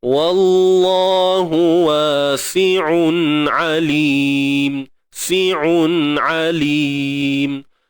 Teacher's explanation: Ain ni duduk pada makhraj halqiyah kita, halqum kita. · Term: izhar halqi ain